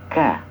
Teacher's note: huruf ka itu kenapa ada hamas ataupun ada udara yang terdengar ketika mengucapkan, karena dia memiliki sifat hamas ka. Asalkan hamasnya itu tidak mendominasi ka.